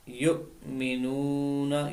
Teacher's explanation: الذین میں تشدید ہے، اس کو ظاہر کرنا ہے، اور یا مدہ ہے۔ یؤمنون، یہاں پر حمزہ ساکن ہے، اس کو جھٹکا دے کر پڑھیں گے